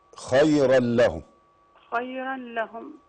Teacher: التنوين برضو جاي وراه اللام برضو ادغام بغير غنة. ادغام بغير غنة.